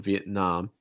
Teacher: Stress the last syllable, the nam. And again, you have that ah sound.